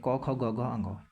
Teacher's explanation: अब देखिए क वर्ग का जो उच्चारण स्थान होगा कंठ है